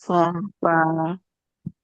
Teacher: Terus perut bibir bawah bertemu ujung gigi seri atas